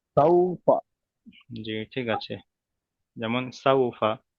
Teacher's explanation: ওয়াও সাকিনের ডান দিকে যাবার এসেছে, এটি হলো ওয়াওলিন। ওয়াওলিনকে নরম ভাবে তাড়াতাড়ি করতে হয়, টান দেওয়া নিষেধ। জি। ফার উপরে যাবার এসেছে, যাবারটি হলো হারাকাত, হারাকাতের পড়াকে তাড়াতাড়ি করতে হয়।